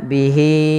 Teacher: Maka panjang untuk mad silah tawilah di sini adalah sebagaimana mad jaiz, yaitu 4 harokat. Maka di sini hi-nya wajib kita panjangkan sepanjang 4 harokat.